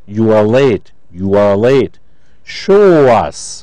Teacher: if a word ends in the vowel sounds, oo as in you, o as in show, ow as in how, and the next word starts with a vowel, the words are linked with the sound w